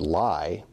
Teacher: starts out at [a] and ends at [ɪ] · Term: diphthong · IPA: [laɪ]